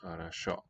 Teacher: the first two O's here are going to sound like a.